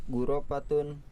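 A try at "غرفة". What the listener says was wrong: Ghurfatun atau ghurfatun? Ghurfatun ya. Ra-nya apa? Ra-nya sukun.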